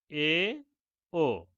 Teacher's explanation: এ জাতীয় স্বরধ্বনি উচ্চারণের সময় জিহ্ব নিম্ন স্বরধ্বনির তুলনায় উপরে এবং উচ্চ স্বরধ্বনির তুলনায় নিচে থাকে। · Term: উচ্চ মধ্য স্বরধ্বনি